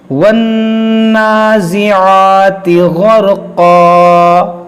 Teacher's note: नून मुशद्दद है, इसमें गुन्ना करेंगे और इस पर खड़ा ज़बर है, इसलिए इसको खींचेंगे